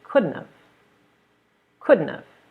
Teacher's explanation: couldn't have but we take it even farther we drop the T · We drop the T. We say couldn't have. · So could have, again, we drop that H sound, we say could have. Sometimes people even drop the V sound.